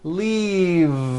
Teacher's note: leave with a voiced V keep the voicing going throughout the whole word and voice the V leave like that